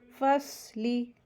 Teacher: स्वाद heavy letter है और इसको हैवी करके पढ़ेंगे। फसली, ली लाम ज़ेर ली, इसको जल्दी पढ़ेंगे, लंबा नहीं करेंगे